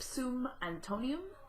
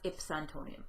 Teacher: if zoom Antonio would be pronounced in poetry as its Antonia the UM simply disappears in the pronunciation and is not counted as part of the syllables